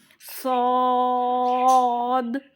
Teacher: وہ دونوں باریک پڑھے جاتے تھے، یہ موٹا کر کے پڑھا جائے گا. اس کو پر کرا جائے گا پڑھتے ٹائم، نہیں تو یہ سین ہو جائے گا. اس کو موٹا کریں گے تبھی یہ صاد ہوگا. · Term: مستعلا لیٹر